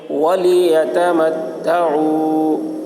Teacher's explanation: واؤ ساکن سے پہلے پیش ہے، واؤ مدہ ہوا، اس لیے واؤ مدہ کو ایک الف کے برابر کھینچ کر پڑھیں گے